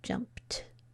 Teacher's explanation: the ed might sound like d, t, id, or ed. In this case, it sounds like t